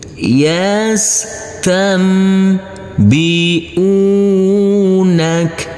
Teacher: nun yang bertemu dengan huruf ba karena ini adalah bacaan ikqlab maka huruf nunnya berubah menjadi huruf mim sukun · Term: bacaan iklab